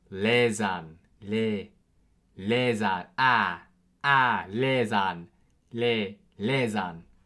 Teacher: S makes a English Z sound, so a Z sound in the middle of words between vowels and before D.